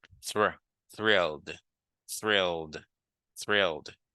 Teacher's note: Thrilled, thrilled, because you have to know how to pronounce the TH, and then you should be able to pronounce the R well, which is a guttural sound